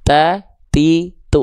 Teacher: Ujung lidah kita sentuhkan dengan pangkal gigi sari atas kita. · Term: huruf ta